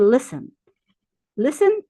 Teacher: Verbs made of two syllables and end in CV and the last syllable is not stressed. We don't emphasize the last syllable. We emphasize the first syllable.